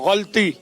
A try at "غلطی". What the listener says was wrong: غلطی موٹا کر کے کہہ دیا, یہ بھی نہیں ہے. غلطی. غلطی. بھائی ایک طرف سے آواز آ رہی ہے غلطی اور ایک طرف سے غلطی, تو ان میں سے درست جواب جو ہے وہ ہے غلطی.